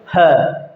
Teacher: जब आप बोलोगे है तो एकदम से सारी की सारी आवाज़, सारी की सारी हवा बाहर निकल जाएगी। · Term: महाप्राण